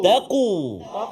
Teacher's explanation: Huruf qaf duduk pangkal lidah belakang kan, dekat dengan anak sebaik anak tekak.